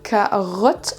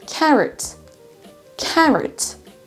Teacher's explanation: Carrot. En fait, le O, c'est également un schwa sound, et on ne peut pas le deviner parce que le schwa sound peut être représenté par différentes lettres.